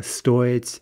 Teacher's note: Стоить, an e verb, and note the stress on the о, стоить. That's the verb meaning to cost.